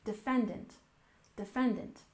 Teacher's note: next we have defendant we stress the second syllable